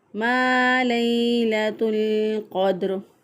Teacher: ता को लाम के साथ मिलाकर पढ़ा क्योंकि लाम साकिन है, साकिन हरफ पीछे वाले ज़बर ज़ेर पेश वाले हरफ के साथ मिलना चाहता है, तो इसलिए इसको लाम साकिन को ता के साथ मिला दिया।